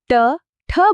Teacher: ટ ઠ બોલતી વખતે જીભ વળીને તાળવાના ઉપરના ભાગે અડે છે. એ છે મૂર્ધન્ય.